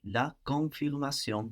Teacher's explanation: not pronouncing that N kind of keeps the vowel in a different place in the mouth, which is much more French. So also we will notice we will pronounce more French vowels if we don't pronounce those N's.